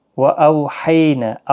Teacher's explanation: وَأَوْحَيْنَا واولین ہے، حی یا لین ہے، دونوں کو نرمی کے ساتھ آدھے الف کی مقدار کے برابر تھوڑا رک کر کھینچ کر پڑھیں